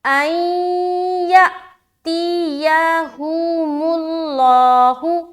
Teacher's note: حمزہ کے اوپر سکون ہے تو یہاں پر حمزہ ساکینہ کا جھٹکا دیں گے